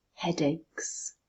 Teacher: where is the stress headaches it's on the first syllable